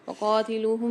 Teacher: قاف کو موٹا پڑھیں گے اور کھینچ کر پڑھیں گے